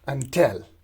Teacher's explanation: in until, the first syllable is unstressed, while the second syllable till is stressed